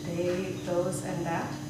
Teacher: sometimes your THs, which were voiced, turn a little bit into a D